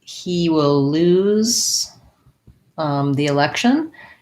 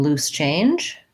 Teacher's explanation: So if I'm talking about he will lose the election, then I want to have, because the Z is voiced, my vowel is longer, versus I have some loose change, my vowel sound is shorter.